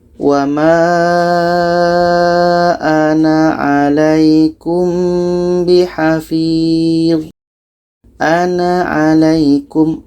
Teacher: Seterusnya dalam ayat 104, di sini ada sifir lagi, sifir mustatil. Sifir mustatil ketika wasol, ketika bersambung itu pendek.